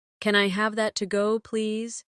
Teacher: When you say to go, your voice should rise slightly. It makes the question sound polite and clear.